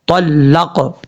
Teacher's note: قاف جو ہے وہ حروف قلقلہ میں سے ہے، اس میں قلقلہ کریں گے